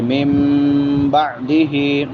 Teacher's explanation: یمدہ ہا ہے اس پہ الٹا پیش ہے، اس کو لمبا کر کے پڑھیں گے. من بعدہ نون ساکن کے بعد با ہے، یہاں پہ اقلاب ہوگا. من بعدہ ہا کے نیچے کھڑی دیر لمبا کر کے پڑھیں گے.